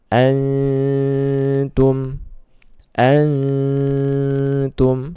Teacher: Antum nun sukun bertemu dengan ta, maka dibaca ikhfa dan ditahan 2 harokat ya, dibaca samar dan ditahan 2 harokat